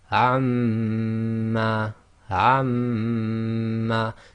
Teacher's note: your lips are still coming together as the normal makhraj of Meem, but you're vibrating the sound in your nasal cavity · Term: Ghunna